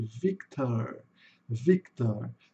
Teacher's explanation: o R no final vai ser o sonzinho do chuá com rzinho pela metade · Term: schwa